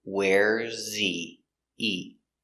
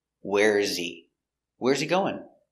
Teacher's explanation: the H is silent in he we say e not he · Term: silent h